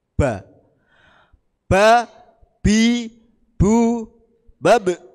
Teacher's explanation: Ini makhrajnya sama kedua bibir atas dan bawah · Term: huruf ba